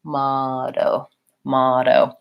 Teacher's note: do these T's more as a flap T which sounds like a light D · So it sounds kind of like motto, motto. Now, I'm not saying a strong, hard, closed D, motto. It's light. I just touch up and release, motto. The other thing is that we have, even though we have two letter O's, this first O says ah, ma, motto.